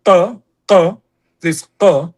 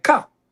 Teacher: in Hebrew, there is a difference between qa, this qa, pharyngeal, and ka. But in Israeli, there is no difference.